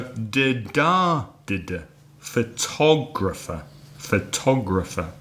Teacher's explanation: How many syllables? Four syllables. 4 syllables. Which one is stressed? This time it's the second syllable.